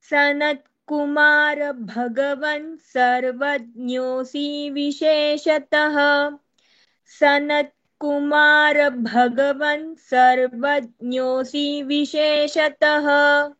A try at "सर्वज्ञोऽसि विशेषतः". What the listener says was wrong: You should not elongate that C सर्वज्ञोऽसि विशेषतः okay again please